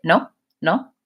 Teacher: I'm not using that lengthened no like an American speaker would